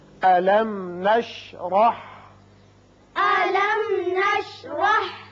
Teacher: میم ساکن یہاں اظہار شفوی ہوگا اور را کے اوپر زبر ہے، اس کو پر کر کے پڑھیں گے